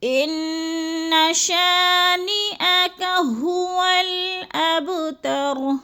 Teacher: شا کو تھوڑا سا ہم نے کھینچنا ہے، ادھر الف مدہ ہے